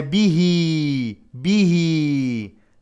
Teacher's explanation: there is a small ya, is mad to harakat, a natural mad